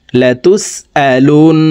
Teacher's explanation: لون واجب গুন্না হরকতের বামে নুনের উপরে তাসদিদ আছে এই কারণে এই লাম তাসদিদওয়ালা নুনের সাথে নাকের বাসি থেকে 3 সেকেন্ড পরিমাণ গুন্নাহ করে ধরে রাখবো